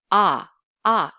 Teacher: saying Korean ah is a bit fuller than English ah